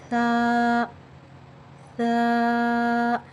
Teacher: یعنی ہماری زبان کی نوک اوپر کے سامنے والے دانتوں کے کناروں سے لگے تو تھا ادا ہوتا ہے اور ہماری زبان کی جب جو ہے سامنے سے تھوڑی سی دکھائی دیتی ہے. تھا میں ہم سیٹی بالکل بھی نہیں آنے دیں گے، تھا کو بالکل نرمی سے ادا کریں گے · تھا کا مخرج ہماری زبان اور اوپر کے سامنے والے دانتوں کے کنارے ہیں. یعنی ہماری زبان کی نوک اوپر کے سامنے والے دانتوں کے کناروں سے لگے تو تھا ادا ہوتا ہے اور ہماری زبان کی جب جو ہے سامنے سے تھوڑی سی دکھائی دیتی ہے.